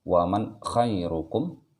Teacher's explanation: Ketika sudah sampai di suara nunnya, waman langsung masuk ke suara kha-nya. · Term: izhar